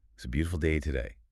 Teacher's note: the stress is mainly on boo and day.